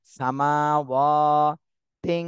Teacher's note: এখানে তানবিনের পরে ইকফার হরফ ত, এজন্য এই তানবিনে ইকফা গুণা করতে হবে।